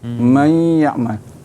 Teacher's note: Huruf ikhfa ni dia seakan-akan idgham, tapi beza dia ialah idgham bunyi dia mesti ada di hidung